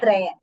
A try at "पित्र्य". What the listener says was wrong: Trya. Not traya. Tr.